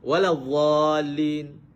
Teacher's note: Apabila menyebut dhad bunyi macam za